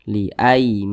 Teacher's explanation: yang berposisi tepat sebelum huruf alif maka huruf tersebut dibaca panjang Makanya Ma dibaca panjang Mad Thobi'i panjangnya dua harakat